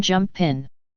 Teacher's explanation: The Bajan speaker seldom pronounces the ending of words that end in two consonants. For instance, jumping would become jump pin.